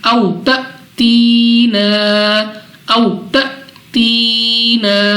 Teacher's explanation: اگر واو ساکن سے پہلے زبر ہو تو واو لین 2 سیکنڈ تک کھینچ کر نہیں بلکہ جلدی بغیر کھینچے پڑھا جائے گا · یہاں پہ ہمارے پاس الف ہے اور الف کے اوپر ہمارے پاس یہ سکون کی علامت ہے، جزم کی علامت ہے، سو اس کا مطلب ہے کہ یہاں پہ ہمارے پاس حمزہ ساکن ہے، اور حمزہ ساکنہ کو ہمیشہ ہر حالت میں جھٹکا دے کر پڑھتے ہیں